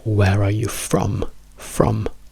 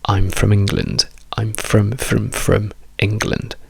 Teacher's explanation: Where are you from? Ha una strong form. I'm from England ha una weak form